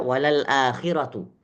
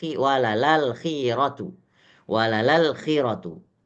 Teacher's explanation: sabahnya bukan akhiratu tapi walal akhiratu itu dinamakan dengan naqal ya memindahkan Hamzah kepada harakat sebelumnya · Itu dinamakan dengan naqal. Ya, memindahkan hamzah kepada harokat sebelumnya. Jadi bacanya kalau riwayat kita walal akhiratu, tetapi riwayat mereka walalal khiratu.